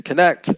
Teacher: from connect to connection, you see the stress is still on the same syllable, the second syllable